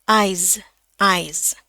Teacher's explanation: Ini s-nya diganti jadi z.